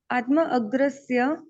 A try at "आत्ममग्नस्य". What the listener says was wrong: मग्नस्य, आत्मा में मग्न, अग्र नहीं है वो, मग्न है, मग्न।